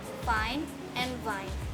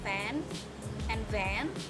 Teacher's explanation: These sounds are labiodental. These sounds are produced by bringing the mouth into position to block the passage of the airstream, but not making complete closure so that air moving through the mouth generates audible friction. The lower lip is in contact with the upper teeth. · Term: Fricative